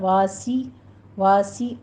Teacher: واسع میں سین کے نیچے کسرہ ہے، باریک کیجیے آواز